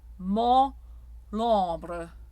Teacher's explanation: Notice there is no nasal consonant. The N or the M do not come in. Those are subsumed by the palatalized quality of the vowel. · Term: Closed O